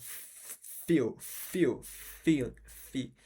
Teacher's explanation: lábio dental, que seria o lábio com dente